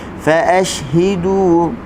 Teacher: Fa ashhidu, hak bagi bawah hi kita senyum, dal bagi depan du, hujung lidah digusi.